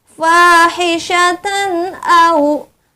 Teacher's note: tidak boleh mendengung tapi jelas, izhar